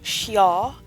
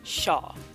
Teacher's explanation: koreans don't really pronounce that y sound that hard because it takes a lot more effort so instead of xiao it's just shaw that goes for all